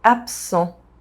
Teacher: The S sound modifies the B sound and it becomes a P sound.